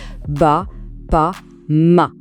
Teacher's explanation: les sons B, P et M, ils sont créés juste en joignant les lèvres. C'est un mouvement super direct.